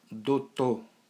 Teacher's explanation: tira o ditongo, ou, e esse passa a ser somente a vogal O, e o R desaparece, e fica apenas o O. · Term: Redução de ditongo a vogal